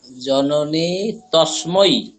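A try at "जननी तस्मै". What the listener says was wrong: Very good sir.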